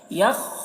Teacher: خا کو پر پڑھنا ہے، خا حروف مستعلیہ میں سے ہے